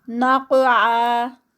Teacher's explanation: قاف ایک تو ہیوی ہے اور دوسرا یہ قلقلہ لیٹر ہے. نقع تو 2 کاؤنٹس.